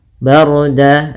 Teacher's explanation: ra-nya tebal yaitu ra takhim karena sebelum ra sukun ada huruf berharakat fathah